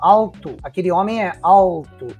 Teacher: você coloca a ponta da língua atrás do dente superior, que é o formato da letra L. Se você fizer com formato de U ou W, aí pode causar um certo, uma misunderstanding, né, na palavra.